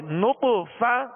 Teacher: طا پر قلقلہ کریں گے اور طا کو پر پڑھیں گے،